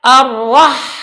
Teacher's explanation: Misal tanpa dijalankan, dia membacanya ar-rahman, tapi seharusnya ar-rah dijalankan, suaranya berjalan dan ada angin